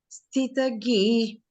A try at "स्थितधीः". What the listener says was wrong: It is not ghi. It is dhi. It is not ghi. It is dhi.